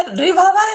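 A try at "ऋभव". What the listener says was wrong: ये रिभव बोला है इन्होंने, रिभव। रि शब्द का उच्चारण।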